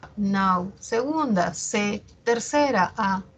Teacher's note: Nau es la sílaba que tiene la mayor fuerza de voz, es la que tiene el acento, la tónica. En nau encontramos un diptongo decreciente, y como ya lo hemos dicho, en un diptongo siempre la mayor fuerza de voz la tiene la abierta.